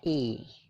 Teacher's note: Nah, bacanya itu i, nyengir gitu ya, jadi agak panjang. Suaranya adalah i, kayak gitu ya.